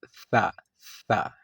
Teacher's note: اگلا کونا آپ زبان کا دونوں دانتوں کے درمیان رکھیں اور بالکل نرمی کے ساتھ آپ ادا کر سکتے ہیں سا